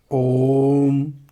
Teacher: ये जो ओम बोले हम कितना लंबा टान के बोले, यानी दीर्घ स्वर से भी ज़्यादा समय लगता है ओम। देखिए बोलने के आप यहाँ पर देख रहे हैं ओइम लिखा हुआ है, लेकिन इसका उच्चारण थोड़ा टान के किया जाता है, इसलिए इसे प्लुत स्वर कहते हैं।